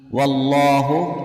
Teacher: lafadz Allah dengan tebal karena huruf sebelumnya yaitu Waw berharakat fathah